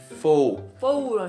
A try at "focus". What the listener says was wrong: okay 그냥 강조하고 있어 근데 foe. 그렇게 천천히 안 해도 돼 막 focus 아니고 okay 다시 한번 fo okay 그 두 번째 문제는 아까 한국 뭐 콩글리시처럼 어떻게 말했지